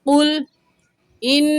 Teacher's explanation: نون مشدد ہے، ہمیشہ غنہ ہوتا ہے، غنہ کریں گے